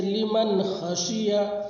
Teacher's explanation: نون کے اوپر جزم ہے، نون ساکن کے بعد حروف حلقی کے 6 حرفوں میں سے خا ہے، اس لیے نون کی آواز کو ظاہر کر کے بلا غنہ کے جلد پڑھیں گے